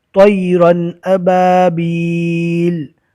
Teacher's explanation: رو بھی پور ہوگا اور تو بھی پور ہوگا، زبر رکنے کی حالت میں جزم بن جائے گا۔